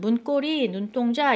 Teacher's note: 두 단어가 합성이 될 때 두 가지 단어가 함께 합성이 될 때 사이시옷이 있어야 되는 경우에 뒷단어에 기역, 디귿, 비읍, 시옷이 된 소리로 된다.